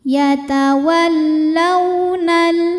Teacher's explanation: mim dibaca dengan jelas minhum yatawallau lau ada hukum harfulin karena ada wau sukun didahului harakat fathah maka dibacanya lembut atau lunak · atau lunak yatawallaunal Alif lamnya dinamakan dengan alif lam syamsiah karena alif lam menghadapi huruf Syamsiah yaitu lam juga maka alif lam tidak dibaca